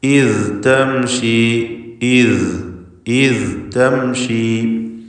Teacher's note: അപ്പോൾ ഈസ് എന്ന് അയവ് വരുത്തുക. ഈസ് തംഷി, ഇത്തംഷി എന്ന് ഇദ്ഗാം ചെയ്യരുത്. ഇത് തംഷി എന്ന് ശബ്ദത്തിന് ഹറക്കത്ത് പോലെ ചലനം വരരുത്.